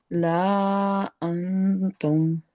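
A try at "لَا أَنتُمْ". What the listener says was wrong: नहीं नहीं, लाम को भी नहीं खींचना है, लाम भी हरकत है ना, मद्दा नहीं है ये, क्योंकि अलिफ के ऊपर तो खुद जबर आ रहा है।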